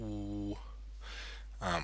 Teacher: a very high back vowel which is like a oo.